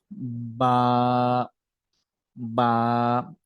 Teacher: আমাদের দুই ঠোঁটের লাগিয়ে সেটাকে একটু ছেড়ে দিয়ে আমরা উচ্চারণ করব